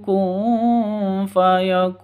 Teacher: nun mati bertemu dengan Fa samar didengungkan siap-siap ke huruf Fanya karena ikhfa hakikiakun Kun panjangnya boleh ketuk boleh empat ketuk boleh